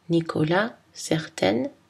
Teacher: Le son N est une consonne nasale, dentale et voisée.